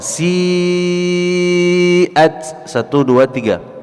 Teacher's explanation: Kemudian kita lanjutkan si'at, mad wajib 4 atau 5 harakat